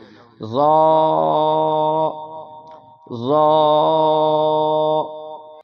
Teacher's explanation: ہونٹ گول نہیں ہوں گے کیونکہ یہاں غا کے ساتھ بھی الف ہے تو منہ سیدھا کھلے گا اور ہونٹوں کو سیدھا کھولیں گے، مطلب ہونٹ گول نہیں ہوں گے کیونکہ واو کو ادا کرتے وقت ہونٹ گول ہوتے ہیں اور منہ کے اندر سے آواز موٹی ادا ہوگی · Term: موٹا